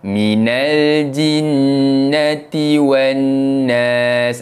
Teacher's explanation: Minal jinnati wan nas. Dekat sini ada dua huruf nun yang bertanda sabdu. Kedua-duanya perlu dibaca dengan bacaan dengung dua harakat